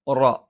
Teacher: നാവിന്റെ തലയുടെ മുതുക് മേലെ മുൻപല്ലിന്റെ മോണയിലാണ്